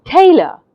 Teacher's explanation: you hear the T part of the word louder than the uh part of the word so what have I done I have said t with more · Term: stress